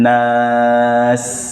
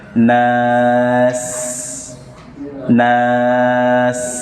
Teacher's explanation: Kemudian akhiri dengan sin, nas, desiskan, nas, nas, jangan disembunyikan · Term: sofir